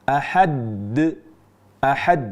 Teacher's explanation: Suara yang sedikit terjeda ini menunjukkan bahwa huruf dal ini yang terakhir bertasjid. Padahal di kata ahad, surah Al Ikhlas itu tidak ada tasjidnya.